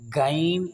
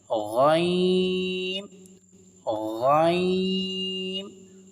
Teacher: غین کو موٹا کر کے پڑھیں گے کیونکہ یہ حروف مستعلیہ میں سے ہے، اور اسے کھینچ کر بھی پڑھیں گے کیونکہ اس کے اوپر مد ہے.